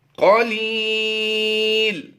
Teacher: قلیل یا مدہ کی وجہ سے ایک الف کرنا تھا، لیکن سکون عارضی ہونے کی وجہ سے یہ مد عارض بن جائے گی، تو یہاں پر ہم نے کم از کم 2 الف کھینچ کر پڑھنا ہے.